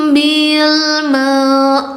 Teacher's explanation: U-nya 4 dibacanya panjang 4 harakat.